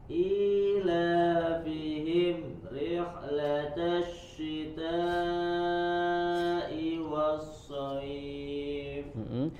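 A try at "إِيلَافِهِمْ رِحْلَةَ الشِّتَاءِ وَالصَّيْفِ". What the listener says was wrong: Ila fihim himri, tidak ada jeda, langsung disambung ke huruf setelahnya. Huruf mim punya sifat bainiyah ya. Jadi mengalir suaranya ila fihim himrihla, tidak ada jeda. Tebalkan lagi huruf shadnya. Was-shayf.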